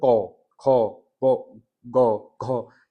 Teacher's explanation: जीवा का पिछला भाग क्या होता है? तालों को स्पर्श करता है। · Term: कंठ व्यंजन